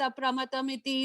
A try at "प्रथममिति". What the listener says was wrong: So I think you again said pramatam, it's pratamam. Pratamam, number one.